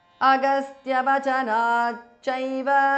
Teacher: So the t in the end of the word changes to ch because of sandhi. So it becomes Agastya Vachanat cha because of sandhi.